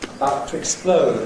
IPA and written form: əˈbaʊt twɪkˈspləʊd (about to explode)